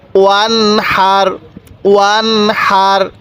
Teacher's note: এই হা হলো ইজহারের হরফ, এই জন্য আমরা এই নুন সাকিনকে স্পষ্ট করে পড়ব।